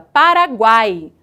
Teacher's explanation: Paraguai há uma tendência muito grande de que pronunciem a palavra a letra A com maior força e a letra u e a letra i de maneira mais fraca de maneira pincelada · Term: tritongo